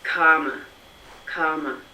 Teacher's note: We don't care about the R. We're not pronouncing that R.